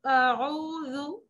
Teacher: अऊज़ु, अऊज़ु, हमजा बड़ी जबर छोटा और आइन सीधा पेश, वाव साकिन ऊ लंबा, लाल सीधा पेश जू, अऊज़ु, ऊ और जू की मकदार एक और ओ कदरे लंबा